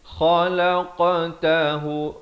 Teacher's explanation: Kha di hujung kerongkong. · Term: izhar halqi